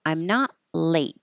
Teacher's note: So I don't say the T in not.